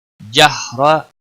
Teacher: را زبر کی وجہ سے پر پڑا جائے گا